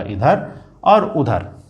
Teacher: निरअनुनासिक केवल मुंह से बोले जाते हैं बच्चों, इसमें से नाक का उपयोग नहीं होता है